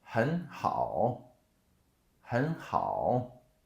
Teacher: So the first, the 很 becomes the second tone.